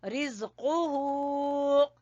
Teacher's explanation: कौफ को जबान की जड़ से